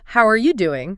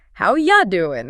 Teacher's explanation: They don't say a clear you sound. They say a short, soft ya. Yeah. So instead of how are you doing, they say how ya doing.